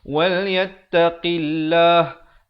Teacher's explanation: lafzul jalalah datang sebelumnya huruf yang berbaris kasrah baca nipis